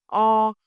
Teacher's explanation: When you say o, your mouth is open and relaxes, a deeper sound.